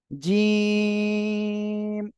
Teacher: জিহ্বার মাঝখান তার বরাবর উপরে তালুর সঙ্গে লাগিয়ে শক্ত আকারে অক্ষরটি উচ্চারণ হবে